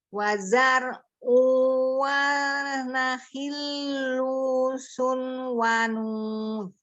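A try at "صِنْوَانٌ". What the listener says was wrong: Sin, bukan su. Sinwan.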